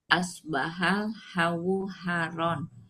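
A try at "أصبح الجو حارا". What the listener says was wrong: Ada titiknya. Jim.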